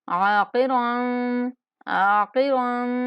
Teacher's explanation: عین کو ایک الف کے برابر لمبا کریں گے، قاف اور را دونوں کو پور کر کے پڑھیں گے اور را پر اخفا کریں گے۔